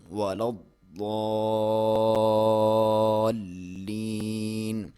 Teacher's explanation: یہاں پہ مد لازم ہے اور اس کی جو لمبائی ہے وہ آپ 3 سے 5 الف یا 3 سے 5 سیکنڈ تک کر سکتے ہیں. مد لازم کہا جاتا ہے, یہ کرنی لازم ہوتی ہے.